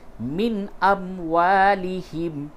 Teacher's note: بالکل ہی ناک میں آواز نہیں لے جائیں گے، بلکہ ظاہر کر کے نون کی آواز کو ظاہر کر کے پڑھیں گے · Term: اظہار